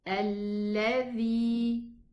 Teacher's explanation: This is a lam shadda, so I pronounce a lam sukoon and the lam fatha.